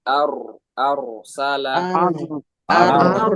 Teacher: Jadi hamzahnya tetap tipis ya, jangan o, tapi a.